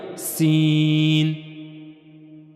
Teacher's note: سین کو ادا کرتے ہوئے سی ٹی کی سی آواز آئے گی